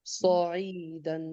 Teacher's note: ये स की आवाज नहीं आनी चाहिए, सौ, क्योंकि सौद बहुत मोटा होता है ना, खूब मोटा होता है